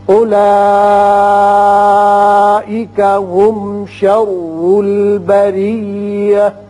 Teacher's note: اولئک مد متصل ہے، 5 حرکات کھینچیں گے